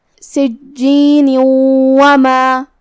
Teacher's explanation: ادغام کا معنی ہے حرف کو حرف میں داخل کرنا، تو ہم یہ تنوین کو واو میں داخل کر کے غنہ اور تشدید کے ساتھ یہ حکم کو ادا کریں گے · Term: ادغام بغنہ